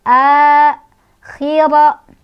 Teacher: Ro-nya dibaca secara tafkhim karena ro-nya berbaris fathah, jadi ditebalkan.